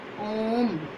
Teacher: जिन स्वरों के उच्चारण में दीर्घ से भी अधिक समय लगता है उन्हें प्लुत स्वर कहते हैं। जैसे ओम।